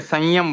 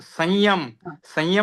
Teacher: तो य के पहले भी वो अनुनासिक ही निकला और र के पहले भी अनुनासिक ही निकला।